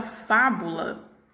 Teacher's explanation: sílaba tônica da palavra fábula é a pílula fa né que ela está tendo pronunciada aí com maior intensidade e ela está na posição antepenúltima